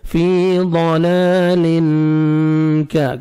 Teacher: تنوین کے بعد حروف اخفاء جو 15 لیٹرز ہیں ان میں سے کاف ہے, آپ نے اخفاء کرنا ہے, نوز میں ساؤنڈ لے کے جانا ہے. فی ضلال کا, کاف کو باریک پڑھنا ہے.